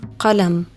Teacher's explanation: Then there's qaf, as in the word قلم pen. This is like a K, but pronounced further back in your throat.